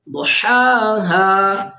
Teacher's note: ضاد کو پر کر کے پڑھیں گے، را کو بھی پر کریں گے.